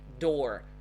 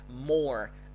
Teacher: this is the retroflex r